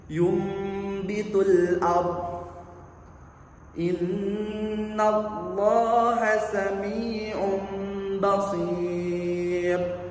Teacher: bunyi nun mati atau tanwin diubah menjadi suara mim disertai dengan gunnah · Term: hukum iqlab